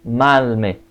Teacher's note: the first nasal becomes L /l/ man plus me becomes malme not manme